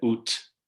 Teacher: you get ut with an aspirated t